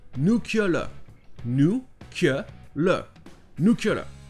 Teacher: c'est comme s'il y avait le son ye entre le C et le L, et que le EA à la fin était considéré comme une voyelle qui se prononçait E. Donc ça donne nuclear.